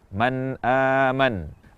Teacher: pengucapan kata man aman adalah dengan jelas tanpa tambahan kadar gunnah, tanpa dipantulkan, tanpa dihentikan, dan juga tanpa menghilangkan gunnahnya. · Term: izhar